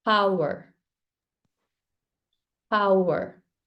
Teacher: you want to feel the burst at the beginning